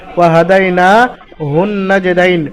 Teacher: নুনের উপরে তাসদিদ আছে, গুন্না করা ওয়াজিব, মুশাদ্দাদওয়ালা নুন, ওয়াজিব গুন্না একালিফ পরিমাণ গুন্না হবে। নাজদাইন, ইয়া সাকিন ডান দিকে দালের উপর যাবার ইয়ালিন, হরফে লিনের পরে নুনের উপরে ওয়াক করছেন, নুনটাকে সাকিন করবেন, নুনের নিচে জের আছে এবং একালিফ পরিমাণ টান দিয়ে পড়তে হবে। · নুনের উপর খাড়া যাবার আলিফ মাদ্দা সমতুল্য, সুতরাং নুনকে একালিফ পরিমাণ আলিফ মাদ্দার মতো টান দিয়ে পড়তে হবে। ওয়াহাদাইনা হুন নাজদাইন, নুনের উপরে তাসদিদ আছে, গুন্না করা ওয়াজিব, মুশাদ্দাদওয়ালা নুন, ওয়াজিব গুন্না একালিফ পরিমাণ গুন্না হবে।